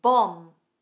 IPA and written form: bɒm (Bomb)